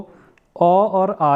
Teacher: तो इन दोनों का अ और आ का जो उच्चारण स्थान है वो कंठ है, देखने को मिलेगा कंठ।